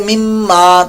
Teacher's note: آگے مما میم مشدد کا غنہ ہے